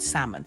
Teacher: same thing also the word salmon and no it's not salmon the L just disappears